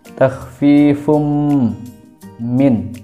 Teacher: hukum bacanya adalah idgham bi gunah, karena domah tanwin bertemu dengan huruf mim